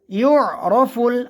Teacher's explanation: ইউরাফুল, ইউ এখানে আমরা আইনের উচ্চারণ ভালো করে করব। ইউরাফুল আইনের উচ্চারণ হলকের মধ্যখান থেকে, অর্থাৎ কণ্ঠনালীর মধ্যখান থেকে আইনের উচ্চারণ আসে